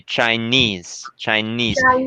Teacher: the second syllable is pronounced more strongly